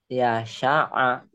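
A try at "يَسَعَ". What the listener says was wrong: Sin kecil. Saya suka es, ingat. Diulang. Ya sa'a. Sin biasa ya. Ya sa'a.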